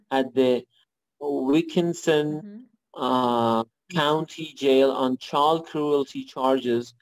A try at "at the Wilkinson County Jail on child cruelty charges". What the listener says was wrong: Yes, very good.